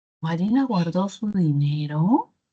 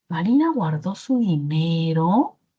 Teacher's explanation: el último tono final, que es un tono final ascendente, porque está arriba de toda la curva melódica